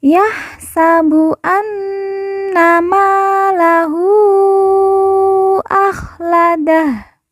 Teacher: Ha di ujung kita sukunkan atau kita matikan karena waqaf atau berhenti.